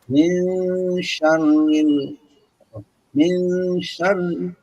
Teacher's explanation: nun mati bertemu shin. Min akan ditahan dikit ya supaya ketahuan ini.